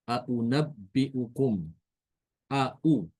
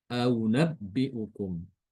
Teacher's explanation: huruf hamzah itu sesuai dengan aslinya dikeluarkan dengan jelas. Aunabbiukum a u ya tidak boleh dibaca tashil ya tidak boleh dibaca aabbiukum karena itu tashil. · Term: tahqik